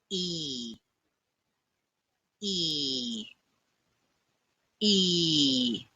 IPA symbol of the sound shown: iː